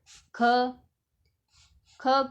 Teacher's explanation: कंठ ध्वनि है और अघोष भी है और महाप्राण भी है क्योंकि यह दूसरा वर्ण है क वर्ग का क वर्ग का